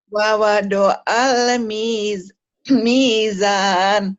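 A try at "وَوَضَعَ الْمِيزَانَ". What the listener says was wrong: Ya, betul, tapi nanti ainnya dilatih ya. Kayak ngeden gitu.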